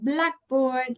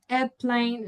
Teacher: the stress usually falls in the first word